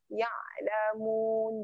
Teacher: Ya'lamun ni kena tekan pada tengah kerongkong.